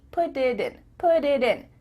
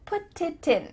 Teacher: instead of spending the time to let the air come out of your mouth, your tongue is just tapping the top of your mouth to make a D.